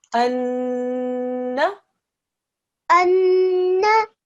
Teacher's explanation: not only do we join, but we press down and we make a 2-second ghunna sound